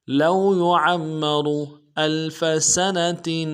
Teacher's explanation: سنة میں سین کی سیٹی باریک ہوگی, آگے تنوین میں غنہ کریں گے